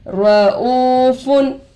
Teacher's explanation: वो साकिन से पहले पेश आकर है वावे मद्दा होगा, थोड़ा खींचकर पढ़ेंगे। फा पर दो पेश आकर है तनवीन होगा।